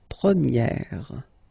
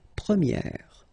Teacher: So it's open, this eh sound.